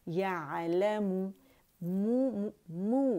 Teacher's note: यअलमु, मु मु कंप्लीट रोलेंगे, मो नहीं करेंगे